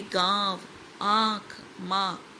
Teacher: अनुनासिक स्वरों के उच्चारण में मुंह से अधिक तथा नाक से बहुत कम सांस निकलती है।